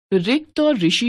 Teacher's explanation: हिंदी में आकर इसका उच्चारण स्वर के रूप में समाप्त हो गया और व्यंजन र तथा स्वर इ के संयुक्त रूप ऋ र जमा इ के रूप में होने लगा है। इस तरह हिंदी में रिक्त और ऋषि शब्दों की पहली ध्वनि के उच्चारण समान हो गए हैं।